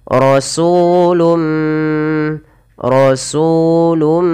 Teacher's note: bertemu dengan huruf mim, maka suara nunnya dimasukkan kepada huruf mim dan diganti dan dihilangkan. Maka hukum tajwidnya dinamakan dengan idgham. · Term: idgham bi gunnah